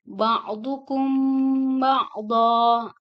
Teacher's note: mim mati ketemu ba. Jadi cara membacanya ikhfa safawi